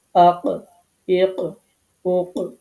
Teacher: আপনার জিহ্বার একেবারেই গোড়া, এই গোড়া থেকে তার বরাবর যে উপরে যে অংশটা আছে মাংসপিণ্ড গলার যেটি আছে, সেখানের সাথে লাগিয়ে কফ উচ্চারিত হয়। এটি একটু ধাক্কা দিয়ে উচ্চারণ করতে হয়, যেটাকে কলকলা হরফ বলা হয়।